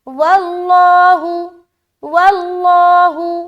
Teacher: لفظ اللہ کا لام کو موٹا رکھیں گے